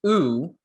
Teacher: the tongue is high up and further back uh but the difference is you can see the lips even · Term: rounding